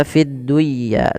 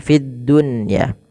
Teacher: pada dasarnya ketika nun sukun bertemu dengan ya itu harus diidgamkan. Tapi karena di sini dalam satu kata maka tidak diidgamkan. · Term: Izhar mutlak